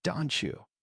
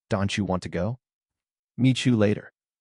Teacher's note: Think about the phrase don't you. The T at the end of don't meets the Y at the start of you. Instead of remaining separate, they mash together to create a sound. The ch sound.